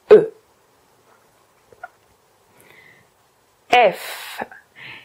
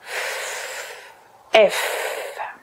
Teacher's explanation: les dents supérieures qui viennent se poser sur votre lèvre inférieure mais il ne faut pas que la pression soit trop forte